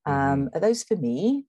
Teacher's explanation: american speakers would tend to use a rise